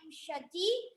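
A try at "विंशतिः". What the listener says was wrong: Vimshati na, Vimshatihi. Visarga is there.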